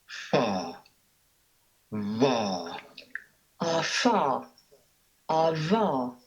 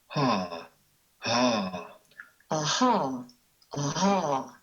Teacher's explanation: They involve forcing the airstream through a narrow gap, which causes it to be turbulent. The result is heard as friction. The fricatives come in pairs, with first a voiceless and then a voiced one at each place of articulation.